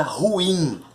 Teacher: A sílaba tônica é a primeira de trás para frente. Então a palavra ruim, ela é uma oxítona.